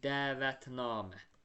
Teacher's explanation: Yəni namədəki a uzun tələffüz olunur.